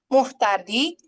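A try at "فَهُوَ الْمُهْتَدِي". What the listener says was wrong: Huanya nggak dibaca. Huwal muhtadi.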